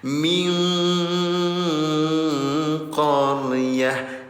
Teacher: Sebelum bertemu dengan huruf qaf dibacanya min. Karena bertemu dengan huruf qaf maka bunyinya disamarkan.